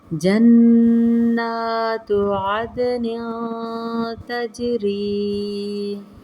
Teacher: اخفا کا قاعدہ، نن نہیں کرنا، ناک کے بانسے میں آواز کو چھپانا ہے